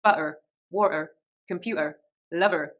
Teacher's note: Often on words like ER and OR, we have that silent R at the end. But with a rhotic R, you'll actually say it. So in the West Country, words like butter, water, computer, and lover are said butter, water, computer, lover.